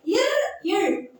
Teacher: இர், இழ் ஆகிய இரு மெய்களும் மேல்வாயை நாக்கின் நுனி, மேல்வாயோட நாக்கின் நுனி வருடுவதால் பிறக்கின்றன